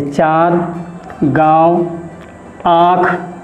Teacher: इस प्रकार के मात्रा का उच्चारण नाक और मुख दोनों से किया जाता है। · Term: अनुनासिक